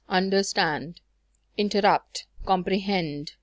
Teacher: two unstressed followed by a stressed syllable · in a line of a poem that contains three syllables within the first two syllables are short and unstressed followed by a third syllable which is long and stressed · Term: anapest